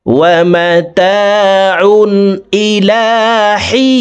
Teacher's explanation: হি এখানে 3 আলিফ টেনে নুনকে সাকিন করতে হবে, কারণ জেরের বাম পাশে জজমালাইয়া মদের হরফ, তো এই মদের হরফের বামের হরফে ওয়াকফ হইলে মদ্দা আরজি 3 আলিফ টানিয়া পড়িতে হয়।